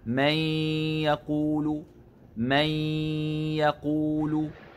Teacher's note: ننتبه أن الإدغام عند الياء وكذلك عند الواو يخرج من الفم مع الأنف، فالياء من الفم والغنة من الأنف بشكل متساو، فلا يغلب أحدهما على الآخر، فلا نقول من يقول بالاعتماد على الفم كثيرا، ولا نقول من يقول بالاعتماد على الأنف فقط، وإنما يخرج الإدغام بشكل متساو من كلا المخرجين كهذا: من يقول يقول آمنا بالله وباليوم الآخر.